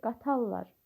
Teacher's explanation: Qatarlar r samiti l samitinə keçir.